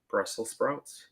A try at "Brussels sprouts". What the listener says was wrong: Sounded like you said spouts. Brussels sprouts.